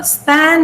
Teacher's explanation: when you say span, this is not aspirated